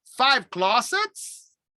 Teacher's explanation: rising intonation to check understanding